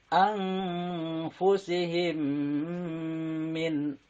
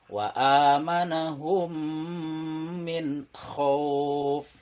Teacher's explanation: Dan untuk idgham mimi ini juga mirip dengan ikhfa syafawi, yaitu harus dibaca dengung. Jadi ditahan mimnya 2 sampai dengan 3 ketukan.